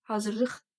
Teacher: sözümüzün ilk hecasında uzanma hadisəsi baş verməyibdir